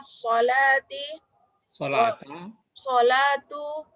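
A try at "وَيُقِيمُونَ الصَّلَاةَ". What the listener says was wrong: Ya, kenapa sholatu? Wa yuqimuna sholata.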